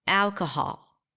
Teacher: Now, the AL is the primary stress.